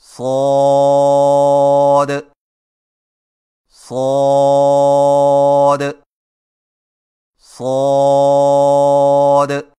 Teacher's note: صاد کی ادائیگی میں زبان کی نوک کو ثنایا سفلی کے کناروں سے مضبوطی سے لگا کر اور زبان کے پچھلے حصے کو تالو کی طرف بلند کرتے ہوئے موٹی اور سیٹی جیسی آواز میں پڑھیں